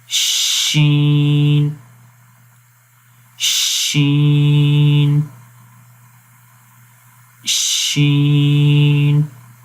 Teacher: شین، تو آپ غور کریں گے کہ شین میں ویسے بھی زبان کا درمیان تالو کے درمیان میں بالکل کمپلیٹ ٹچ نہیں کر رہا بلکہ تھوڑا سا گیپ ہے، تو یہ آپ نے ذہن میں رکھنا ہے شین کو پڑھتے وقت بالکل اس کو ٹچ نہیں کرنا۔